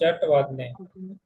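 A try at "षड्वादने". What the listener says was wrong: Shat nahi, Shad.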